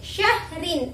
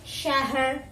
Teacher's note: Khusrin ketika diwakafkan menjadi khusr ya. Jadi huruf ro-nya tetap dibaca tafkhim atau tebal